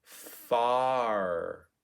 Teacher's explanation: we oftentimes round our r's even when they're after a vowel which makes our ah sound get a little bit rounded · tend to say father far we tend to say far because we're prepping for that rounded r so it starts to affect the vowel before it